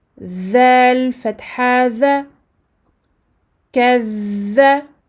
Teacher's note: Rakhawah, je lui donne son temps d'écoulement du son.